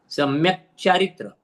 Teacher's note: चा दीर्घ है, री ह्रस्व है